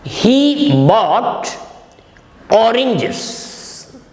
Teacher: For example, he bought oranges. Here, stress is given on the word he. The subject is stressed. It means he only bought oranges, nobody else.